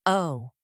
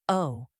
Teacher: Notice how the lips start slightly rounded and then open. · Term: long O sound